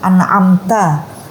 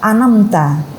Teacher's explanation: Nah, atau yang berubah ziyadah au nuqsanul huruf, bertambah atau berkurangnya huruf. Contoh itu tadi, an'amta dibaca anamta. Lah, ainnya dihilangkan.